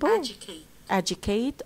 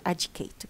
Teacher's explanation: The first syllable is the stressed syllable.